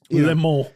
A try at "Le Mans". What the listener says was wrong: It's not totally vowelless. You have to do the little nasal Le Mans. It kind of turns into something weird with your nose.